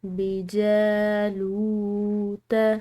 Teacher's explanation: بجالوت، جیم، اس کو لمبا پڑھیں گے الف مدہ کی وجہ سے، لام کے بعد واو ساکن آ رہی ہے، تو یہاں پر بھی ایک الف کے برابر کھنچاؤ دیں گے